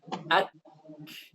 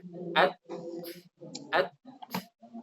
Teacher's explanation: Untuk menghilangkan kontradiksi ini adalah kita harus memahami bahwa sifat syiddah yang ada pada kaf dan ta itu berada di awal. Jadi sifat syiddah itu duluan. Baru setelah syiddah datanglah hams.